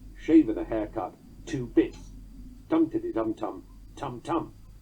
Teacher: you would say haircut and 2 bits were both spondaic